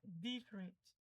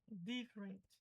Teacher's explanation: você precisa ver onde é que tá a entonação, no di.